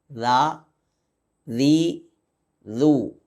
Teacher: ദാലിന്റെ മഹ്റജ് നമ്മുടെ നാവിന് റെ അറ്റം മേലെ മുൻപല്ലിൽ കൊണ്ട് മുട്ടിച്ച് അവിടെ നിന്ന് പുറപ്പെടക്കുക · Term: ദാലിൻ്റെ മഖ്റജ്